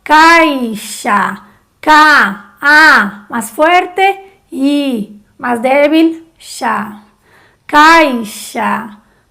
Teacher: Por ejemplo, en la palabra caixa, la primera A, es la vocal, es más fuerte, K. Y la I es la débil, es la semivocal, como por ejemplo, caixa, K, A, más fuerte, I, más débil, xa.